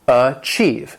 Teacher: And this word has two syllables, and the stress is on that second syllable.